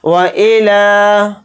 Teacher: لام کے اوپر کھڑا زبر ہے، لام کو تھوڑا کھینچ کر پڑھیں گے